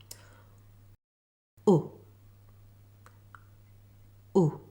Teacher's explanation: Let me show you how to make the /ʊ/ sound. The tongue should be high and towards the back of your mouth, the jaw fairly closed and the lips rounded and fairly forward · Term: U sound